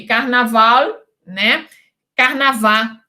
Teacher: acontece a vocalização do L que se passa para o U